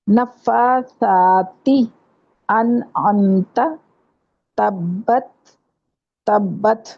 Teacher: یعنی تا ساکن کو تھ کی آواز کے ساتھ پڑھا جائے